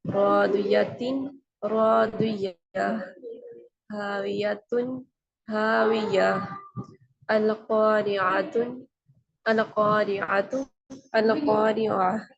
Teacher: عربی میں گول تا جب آئے تو وقت کے لیے ہم اس کو ہاں میں بدل دیتے ہیں اور اس کے اوپر سکون لگا دیتے ہیں